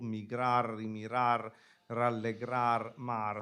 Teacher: you have the truncated words, parola tronca, without the final vowel